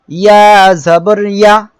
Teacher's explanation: এই অক্ষরটা ইয়া। ইয়া জিহ্বার মাঝখান তার বরাবর উপরে তালুর সঙ্গে লাগিয়ে উচ্চারিত হয়